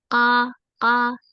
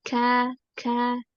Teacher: meskipun makhrajnya dari pangkal lidah tapi karena sifatnya tipis jadi suaranya Jangan dinaikkan ke langit-langit Jadi bukan Q Q tapi ka ka ya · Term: Kaf